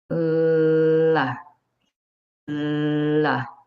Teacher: Air passes over the sides of your tongue, not through your nose, sides of your tongue. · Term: L sound